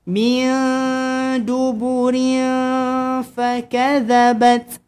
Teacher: Nun kosong ataupun tadwin jumpa dengan huruf yang ikhfa hakiki kena sembunyikan dengung.